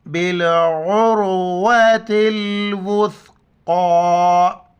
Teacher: زیر تل، بالعروۃ الوثقی، سا کے وقت زبان باہر نکالنا ہے، واو کو سا کے ساتھ ملائیں گے